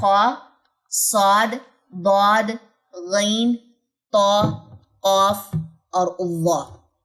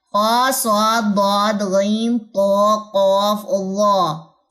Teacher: میری اقصی لسان اوپر کی طرف اٹھی ہے تو ہی اس میں تفخیم آئی ہے